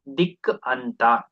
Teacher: ಇಲ್ಲಿ ಕಕಾರ ಇದೆ ಮೊದಲನೇ ಪದದ ಕೊನೆಯಲ್ಲಿ, ಅದ್ರ ಜಾಗದಲ್ಲಿ ಗಕಾರ ಬಂದಿದೆ ಅಂದ್ರೆ ಜಶ್ ಅಕ್ಷರ ಬಂದಿದೆ, ಹಾಗಾಗಿ ಇದು ಜಶ್ವ ಸಂಧಿ ಉದಾಹರಣೆ. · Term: ಜಶ್ತ್ವ ಸಂಧಿ